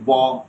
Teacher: যেমন দেখেন, আপনি ব দুই ঠোঁটে আপনি উচ্চারণ করছেন